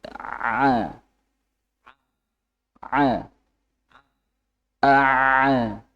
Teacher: ain itu lebih Enaknya ditenggorokan aja Pak tenggorokan disempitkan tidak usah ter berpacu dari ee dengan ini apa namanya yang